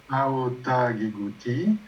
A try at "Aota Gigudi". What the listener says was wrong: Et tu vas dire Di. Aota Gigudi. Aota Gigudi, mais parce que c'est Di. Ça, c'est la difficulté, hein. Chaque fois, quand le ta est préfixé, en général, le ta devient da. Préfixé, ça veut dire que tu as un préfixe avant.